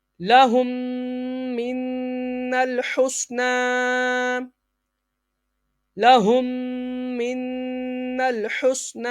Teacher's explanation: Next میم ساکن کے بعد حرف با اور میم کے علاوہ کوئی بھی حرف آ جائے اظہار شفوی ہوگا یعنی غنہ نہیں کریں گے، ام صبرنا، ام صبرنا۔ نیکسٹ میم ساکن کے بعد میم آ جائے تو ادغام شفوی یعنی غنہ ہوگا